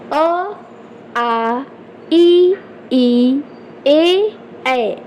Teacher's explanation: ओठ गोल नहीं हो रहा है आपका किनारे किनारे की साइड फैलता है थोड़ा सा ओठ, ठीक, तो ये आपका अवृत्ताकार स्वर है।